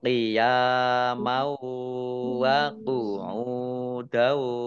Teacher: Qiyamau, ya fathah alif, mat tobi'i. Fathah tanwin bertemu dengan huruf wawu, idgham bi gunnah, masuk dengan mendengung, yaitu mendengung wawu. Ditahan wawunya ya.